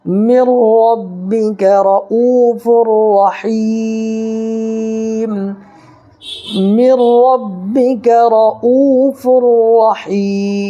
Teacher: اور یہاں پر یا ساکنی سے پہلے ہا کے نیچے زیر ہے، تو یا ساکنی سے پہلے زیر ہو تو یا مدہ ہوا، اس کو ایک الف برابر کھینچ کر کے پڑھیں گے